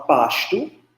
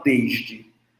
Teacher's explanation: Por exemplo, nós nordestinos do Rio Grande do Norte e da Paraíba, nós usamos eh a variante palatalizada antes de T e D